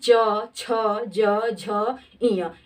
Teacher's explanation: इन सभी वर्णों का उच्चारण कैसे होता है, तालु से होता है। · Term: च वर्ग